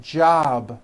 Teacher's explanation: a voiced sound job it's not jop with an unvoiced P keep the voicing going throughout the whole word job with a voiced B ending